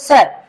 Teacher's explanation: स स बोल रहे तो हमें ऐसा लग रहा है कि हमारे दांत आपस में क्या हो रहे हैं मिल रहे हैं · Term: दंती वर्ण